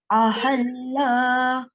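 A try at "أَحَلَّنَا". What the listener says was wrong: Okay, so we should not prolong any letter having a short stroke on it. So it is ahallana.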